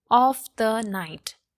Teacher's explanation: So of the are unaccented and night is accented. This is an anapest which has 3 syllable, and we will learn about it in the trisyllabic feat, okay?